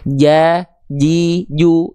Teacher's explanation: Huruf jim tengah lidahnya sampai nempel.